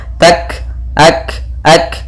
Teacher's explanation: ada kaf berharakat sukun, yaitu ada sifat hamas yang harus ditampakkan